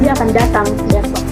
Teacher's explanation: Jadi pada kata besok itu intonasinya turun. · Pola intonasinya itu turun di akhir. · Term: kalimat berita